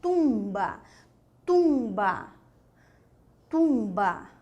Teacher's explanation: Mas nós podemos ter a nasalização do U também.